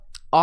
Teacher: विवृत स्वर ध्यान रखना आ है, वह स्वर जिसके उच्चारण में मुंह पूरा खुल जाए